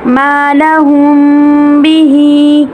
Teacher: میم ساکن کے بعد حرف با آ جائے تو اخفاء شفوی کا قاعدہ ہوتا ہے، یعنی میم ساکن کو اتنی نرمی سے ادا کرتے ہیں کہ ہمارے ہونٹ مکمل طور پر بند نہیں ہوتے بلکہ معمولی سی جھری رہ جاتی ہے اور آواز بھی ہونٹوں میں رہے گی